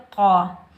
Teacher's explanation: اس قاف کو ہم موٹا پڑھیں گے، یہ قاف حروف مستعلیٰ میں سے آ رہا ہے۔ قاف کے اوپر زبر بغیر کھینچے پڑھیں گے قا۔